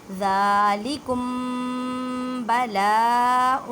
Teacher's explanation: میم ساکن ہے اور میم ساکن کے بعد با آ گئی ہے، یہاں پہ اخفاء شفوی کا قاعدہ کریں گے، اخفاء شفوی میں گننا کرتے ہیں